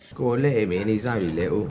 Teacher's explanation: if you really listen to Tom Hardy, you'll hear that he's not using his T's